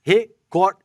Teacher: Recorde é uma palavra paroxítona, ou seja, a sílaba forte é a penúltima. O certo é record e não recorde.